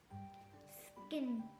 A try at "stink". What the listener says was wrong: stink, skin नहीं, st, stink, stink.